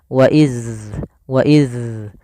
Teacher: Maka huruf dzal itu tidak boleh ada nafas yang dikeluarkan.